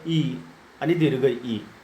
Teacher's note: तालुस्थानापासून म्हणजे घसा, जीभ आणि घशाचा जो वरचा वांगेंद्रियाचा जो वरचा भाग आहे त्या वरच्या भागाला स्पर्श करून ज्या स्वरांचा उच्चार केला जातो त्या स्वरांना तालव्य स्वर असे म्हणतात. म्हणजे तालूच्या साह्यानं ज्यांचा उच्चार होतो त्यांना तालव्य स्वर असे म्हणतात